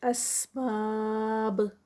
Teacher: اینڈ پہ باب کا با ہے تو قلقلہ ہوگا کیونکہ با جو ہے وہ اسٹاپ پر آئے گی